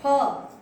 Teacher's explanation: जो हमारा फै है वो हमारे ओष्ठों को मिलके निकलता है